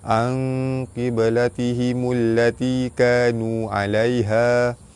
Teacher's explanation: Nun mati bertemu dengan qaf, hukum dia ikhfa hakiki, dibaca samar-samar tebal serta dengung 2 harakat. · Ba mati di tengah kalimah qalqalah sugra, lantunannya tidak kuat